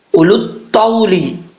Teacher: اب اس کے بعد حمزہ کے بعد واو ہے، یہ جو واو ہے یہ واو سائلنٹ ہے، اس واو کو نہیں پڑھیں گے